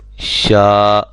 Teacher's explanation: اب یہ شین کھڑا زبر شا اور شین زبر الف شا، دونوں کی مقدار ایک ہی ہے، لمبا کرنے کی مقدار دونوں کی ایک ہی ہے، ایک الف کی مقدار کے برابر کھڑا زبر کو بھی لمبا کریں گے